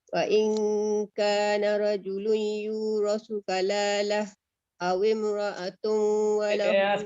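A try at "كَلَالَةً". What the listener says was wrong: Apa berhenti kalalah? biru bukan berhenti kalalah, bukan senyap dengan matikan ha. Kalalatan kena hidupkan. Kalalatan.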